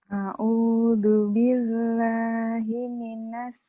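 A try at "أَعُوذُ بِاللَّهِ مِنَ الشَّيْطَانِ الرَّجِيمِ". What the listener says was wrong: Shin. Shinnya mana? A'udzu billahi minasy shin.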